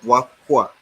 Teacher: The H has now been labialized to give it the hua instead of who. In fact, the U in the who has been changed to WA.